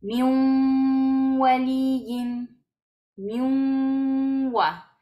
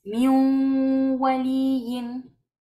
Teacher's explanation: El sonido debe salir por la nariz. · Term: gunna